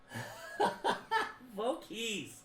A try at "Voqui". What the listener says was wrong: There's no S. There's no S.